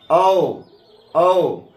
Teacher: औ को कंठोष् वर्ण कहते हैं क्योंकि इनके उच्चारण में कंठ और ओष्ठ का उपयोग होता है। जैसे औ औ ओष्ठ भी सड़ता है और कंठ से भी इनकी ध्वनि निकलती है। · जैसे होते औ औ, ओष्ठ भी सटता है और कंठ से भी इनकी ध्वनि निकलती है, इसीलिए औ और अ को कंठोष्ठ वर्ण कहते हैं।